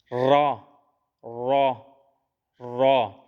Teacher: را، زبان کی نوک اور مقابل کے تالو سے ادا کیا جاتا ہے